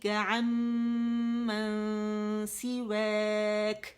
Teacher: اور عمن کیوں میں نے پڑھا, کیوں کہ یہاں پہ ہر غنہ مشدد ہے, 3 کاؤنٹس ہم نے دینے, اور نون کے بعد سین آ رہا ہے, اخفا کرنا ہے باریک والا